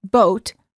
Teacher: for the o sound as in boat the lips are rounded and tense